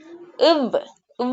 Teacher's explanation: நம்மட பல் வந்து நம்ம உதட்டுல படுது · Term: உதட்டு பல் ஒளி